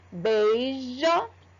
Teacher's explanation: É quase eu não escuto o som do I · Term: semivogal